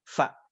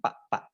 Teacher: ujung gigi seri atas nempel di bibir bawah bagian dalam ya, fa. Nah, kalau masih sulit bilang fa, nah mulutnya mingkem, kita tinggal tarik bagian atas. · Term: huruf fa